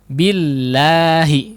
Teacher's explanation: lam yang ada di lafdzul jalalah di situ setelah huruf ba tidak ditebalkan ya